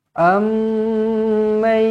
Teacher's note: mim sabdu di sini yang pertama kita jumpa pada hari ini didengungkan dengan dua harakat wajibul gunnah